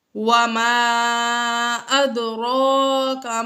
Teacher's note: را کے اوپر کھڑا زبر ہے تو یہ پر پڑھنے کی صورتوں میں سے ہے، تو اس صورت میں را کو پر پڑھیں گے